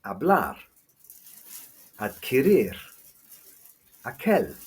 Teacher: These words don't need an accent either, but the stress is on the last syllable, as they all end in a consonant other than N or S